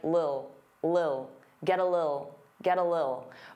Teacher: Some native speakers really reduce this word and it just sounds like lil